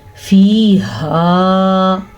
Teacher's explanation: ہا حلق کے آخری حصے سے نکلتا ہے